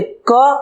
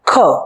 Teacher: કના ઉચ્ચારણમાં હવાનો ધક્કો હાથ ઉપર ઓછો લાગે છે જ્યારે ખના ઉચ્ચારણમાં હવાનો ધક્કો હાથ ઉપર વધુ લાગે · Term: અલ્પ પ્રાણ